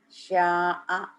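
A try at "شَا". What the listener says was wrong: Nggak ada yang panjang. Sya'a. Sya'a.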